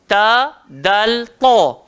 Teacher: Ta sangatlah nipis. Dal sederhana.